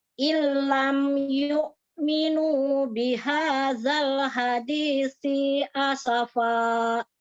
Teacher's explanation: Huruf sa-nya ya, harus keluar ujung lidahnya sedikit. Kalau tidak keluar dia seperti huruf sin.